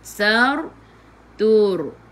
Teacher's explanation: Sebelum ra ada baris depan, kena baca dengan tebal. Lidah diangkat ke atas. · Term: tafkhim